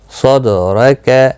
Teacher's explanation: صاد دال زبر صد را زبر را کیف زبر کا، صدرک، دال پر قلقلہ ہوگا اور پچھلے حرف کے ساتھ بھی ملا کر پڑھا جائے گا